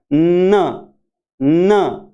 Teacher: उसके बाद में नेजल, नेजल और एल्वियोलर, यानी हमारी जुबान जो है वो मसूड़ों पे जाके लगती है और फिर हम इसको बोलते हैं नाक की सहायता से बोलते हैं